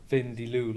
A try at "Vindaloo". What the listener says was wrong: Vindaloo. It sounded like you said Vin Diesel. Vin Diesel.